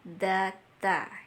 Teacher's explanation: Da dan ta itu tempat keluarnya sama ya. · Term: idgham mutajanisain